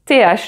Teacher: c'est de l'air qui sort de ta bouche et cet air-là, il fait que tu prononces ce fameux TH voiceless. TH, donc sans voix, TH en anglais.